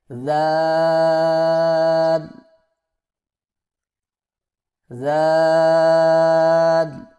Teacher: اگلا حرف ہمارے پاس ہے زال. زبان کی نوک کو سامنے والے اوپر کے دو دانتوں کے اندرونی کناروں سے نرمی سے لگا کر باریک آواز میں پڑھیں، یعنی زال زال زال.